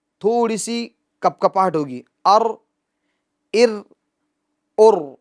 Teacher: را کے اندر ایک صفت، ایک خوبی پائی جاتی ہے، وہ ہے کپکپاہٹ، تکرار، مشابہت تکرار، ار، تھوڑی سی کپکپاہٹ ہوگی، ار، ار، ہاں زیادہ نہیں، ار، یہ ایک را سے کئی را ہو جائے گی جو کہ غلط ہے بالکل، کپکپاہٹ ہوگی مگر مشابہت تکرار، تکرار ہوگی مگر مشابہت تکرار ہلکی سی ہوگی، اس بات کا ہمیں خیال رکھنا۔